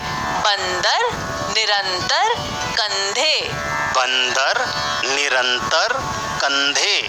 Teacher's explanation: बिंदी वाले वर्ण को बोलते समय हवा नाक से निकलती है? हम इन बिंदी वाले वर्णों को नाक बंद करके नहीं बोल सकते। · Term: अनुस्वार